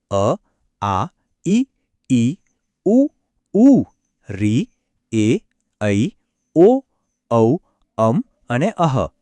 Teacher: મુક્તપણે આપણા ગળામાંથી બહાર આવે છે આ સ્વરો બોલ બોલતી વખતે હવાનો પ્રવાહ ક્યાંય પણ રોકાતો નથી બસ સીધો જ નાભી અને ગળામાંથી થઈને બહાર નીકળે છે